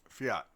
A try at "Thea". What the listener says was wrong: You just skip over the D, skip over the H, and however many other consonants you add to the end. Just the first three.